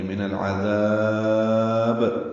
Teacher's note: من العذاب نون لام سے ملے گا، لام ساکن پہ اظہار قمری ہے عین کی وجہ سے، عین وسط حلق سے ادا کریں گے، ذال کو نرمی سے پڑھیں گے، لمبا کریں گے اور با ساکن پہ قلقلہ کریں گے